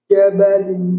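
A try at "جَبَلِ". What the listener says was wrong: Ya, ingat huruf jim nggak boleh mendesis. Ja, jabali. Jabali.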